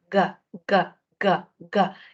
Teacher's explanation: usted sentirá que no usa los labios sentirá que no usa la punta de la lengua sentirá que no hay contacto con los dientes sentirá que no toca los alvéolos para nada y más bien Es en la parte posterior · los dientes sentirá que no toca los alvéolos para nada y más bien Es en la parte posterior ga ga ga ga en la zona blandita Entonces es en el velo por lo tanto el sonido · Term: sonidos velares